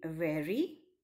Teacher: the letter R in very is pronounced as a flap or tap by some English people